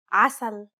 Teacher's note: The first sound sounds like a deep and turbulent sound that rumbles far in the throat. You'll have to retract the back part of your tongue into your mouth to cause constriction in your throat.